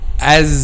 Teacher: two incisors lower two incisors front two lower incisors and then the sound passes between upper and lower front incisors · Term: letter zay